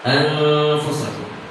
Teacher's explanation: semuanya suara itu dipusatkan di bibir kita sih, karena kita akan mengucapkan huruf fa